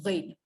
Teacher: ghin jangan baca ghim, dia bukan rapat bibir, ghin. Okey, sebelah kepala, lepas tu ekor naik ke atas, nama huruf fa.